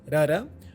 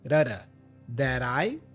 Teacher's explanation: So the T for that has a flap sound, rada, which connects with the vowel I